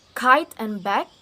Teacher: K is voiceless because there is no vibration. · Block airflow with the back of the tongue against the soft palate, so this is velar.